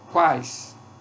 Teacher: Semivogal, seguida de vogal, seguida de semivogal. Uma mesma sílaba. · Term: tritongo oral